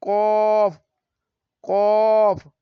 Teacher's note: জিহ্বার গোড়া তার বরাবর উপরের তালুর সঙ্গে লাগিয়ে উচ্চারিত হয় কফ কফ। ৫ নাম্বার মাখরাজ, জিহ্বার গোড়া থেকে একটু আগে বাড়িয়ে তার বরাবর উপরের তালুর সঙ্গে লাগিয়ে কাফ কাফ উচ্চারিত হয়।